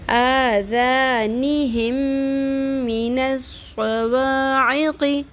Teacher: عین اور قاف زیر ہے, شارٹ رکھنا ہے